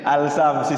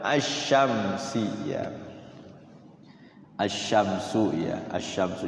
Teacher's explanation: Jadi ada al-nya tapi tidak berbunyi.